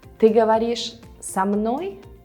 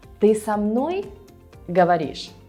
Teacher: we're still emphasizing the same part, со мной, no matter where it is, in the middle or in the end of a sentence